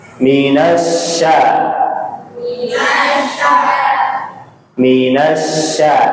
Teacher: huruf syin itu makhrajnya di mana? lidah. Tengah lidah. Nempel di mana? Langit-langit.